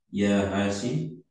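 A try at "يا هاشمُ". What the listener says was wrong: Hasimu ya dibaca ya. Hasimu ya, supaya tahu harokat ya.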